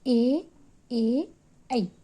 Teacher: ಕಂಠ ಮತ್ತು ದವಡೆ ಸಹಾಯದಿಂದ ಉಚ್ಚರಿಸಲ್ಪಡುವ ಅಕ್ಷರಗಳು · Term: ಕಂಠತಾಲವ್ಯಗಳು